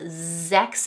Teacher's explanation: the S making a Z sound at the beginning of both sechs and sieben